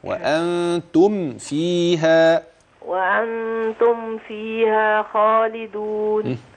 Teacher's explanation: الميم في أنتم ما فيش فيها غنة